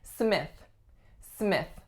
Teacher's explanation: Now I think there are a couple of things that might be tricky about this last name. The first one is the lax I vowel, and the second one is the voiceless TH.